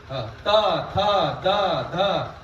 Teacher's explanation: दोन्ही दाताच्या मध्ये जीभ अडकली जाते